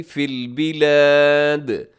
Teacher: یہاں آخر میں دال قلقلہ ہوگا